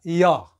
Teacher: जीभ को हल्का सा जब ले जाएंगे तालु के पास और छोड़ेंगे तो हो जाएगा य। तो य जो है कहां से, तालु से।